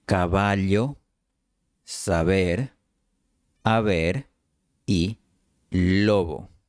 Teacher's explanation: Las dos letras se pronunciaban solo con los labios, sin los dientes. La única diferencia era que la B se pronunciaba con un cierre completo y la V sin un cierre completo.